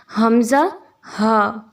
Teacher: हलक के नीचे वाले हिस्से से अदा होते हैं। जब आप इनको अदा करते हैं तो एक वाइब्रेशन सी महसूस होती है आपको हलक के निचले हिस्से में, हमज़ा हा।